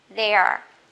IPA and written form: ðeə (there)